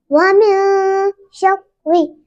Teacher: را کو دو بار پڑھیں گے, پہلی بار ساکن دوسری بار متحرک